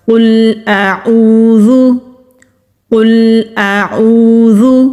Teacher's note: پہلے حمزہ کی آواز آئے گی، پھر عین کی آواز آئے گی